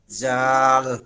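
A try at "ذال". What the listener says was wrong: জাল না, রা রা জিব্বার আগাটা এই দুই দাঁতের আগায় লাগাই দিতে হবে, রা জিব্বার আগা এই দুই দাঁতে লাগাতে হয়, এই দুই দাঁত সানায় উলিয়া, জাল জাল না, এইখানে লাগাইয়া নরম করে, কোনো আওয়াজ হবে না, যা জ জে জে এরকম কোনো আওয়াজ না, একদম নরম আওয়াজে, জাল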